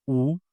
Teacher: U is a back vowel. My mouth takes a round shape, U. So it's a back rounded one.